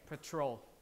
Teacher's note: this one will receive uh less aspiration or even no aspiration even though it's initial because it's not stress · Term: unaspirated p